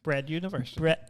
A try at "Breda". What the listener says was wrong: bread, but you move the A to the end of the word.